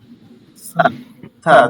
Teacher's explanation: দুই দাঁতের মাঝখানে আস্তে করে বাতাস বের হচ্ছে